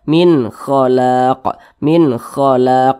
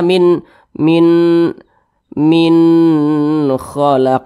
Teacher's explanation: hukumnya adalah izhar halqi dibaca jelas tidak berdenggung jadi baca pendek saja min khalaq min khalaq Jangan dibaca min